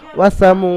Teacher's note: অ মাদ্দা এক আলিফ পরিমাণ, মিমকে টান দিয়ে পড়তে হবে। ওয়াসামু, দালের উপরে জাবার হারাকাত, তাড়াতাড়ি পড়তে হবে।